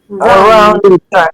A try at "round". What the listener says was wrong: Round. Without the A, it's round.